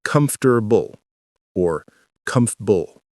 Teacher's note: 3 syllables. The middle is compressed.